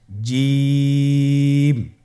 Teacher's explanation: জিম হরফটি বারিক হরফ এটা উচ্চারণ করতে হবে তিন আলিফ টেনে